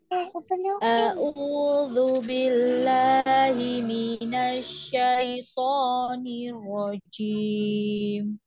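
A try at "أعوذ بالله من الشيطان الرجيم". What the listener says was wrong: hati-hati jimnya berdesis. Rojim, rojim. Dilihat posisi lidahnya seperti ini. Jadi jauh ya, jangan ditempel, jangan sampai gigi atas kita itu nempel lidah di situ. Jangan sampai.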